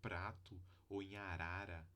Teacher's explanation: a língua encosta apenas uma vez nos alvéolos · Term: tap